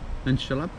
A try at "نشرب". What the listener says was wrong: بريت نشرب. نشرب. With a B at the end. نشرب.